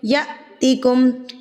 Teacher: हमज़ा के ऊपर जब ये साकिन की अलामत आ जाती है, जज़म की अलामत आ जाती है, तो हमज़ा को झटका दे के पढ़ा जाता है।